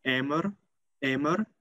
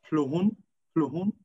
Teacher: in Standard Albanian, the n, the nasal n, became a rhotic r. But in Geg Albanian, these nasals are still preserved.